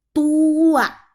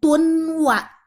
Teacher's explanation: Sama seperti koli di ayat 11 tadi. Bunyi N hilang masuk ke bunyi W. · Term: idgham bigunnah